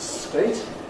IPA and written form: steɪt (state)